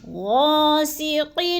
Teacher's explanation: غا کو تھوڑا سا لمبا کرنا ہے، الف مدہ ہے